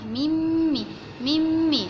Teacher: Nun ni memang dah tenggelam terus. Memang tak ada. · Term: nun mati berjumpa dengan huruf mim